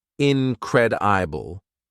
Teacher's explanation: it has 4 syllables, incredible, and the second syllable is stressed